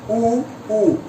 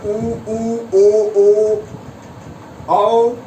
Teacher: ऐसे स्वर जो गोलाकार मुख में बोले जाएंगे वो वर्तुल होंगे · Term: वर्तुल स्वर